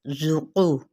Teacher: زا سفیریہ لیٹر ہے، یعنی سیٹی کی مانند آپ نے آواز نکالنی ہے. ذُقُ، قاف حروف مستعلیہ میں سے ہے، پر پڑھنا ہے موٹا کر کے.